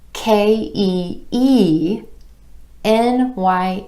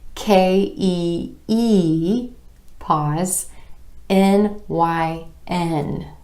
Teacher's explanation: my emphasis is falling on the E and the N at the end of these chunks of letters